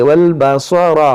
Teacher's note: صاد موٹا کریں گے, را موٹا کریں گے, والبصر, والفؤاد یہ واو نہیں حمزہ پڑھیں گے, والفؤاد كل اولئک کان عنہ مسئولا ولا تمشی فی الارض مرحا.